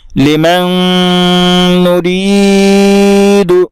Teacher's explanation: میم کا نون میں ادغام ہوگا اور یہ ادغام مع الغنہ ہوگا اس لیے اس کو غنہ کے ساتھ پڑھیں گے۔